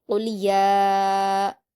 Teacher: یا کی کھڑی زبر کو 4 حرکات یا 5 حرکات کے برابر کھینچیں گے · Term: مد متصل